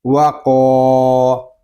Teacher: قوف یہ حروف مستعلیہ میں سے ہے، اس کو پور یعنی موٹا پڑھیں گے، اور یہاں پہ الف مدہ ہو رہا ہے، اس لیے قوف کو ہم ایک الف تک کھینچ کر پڑھیں گے۔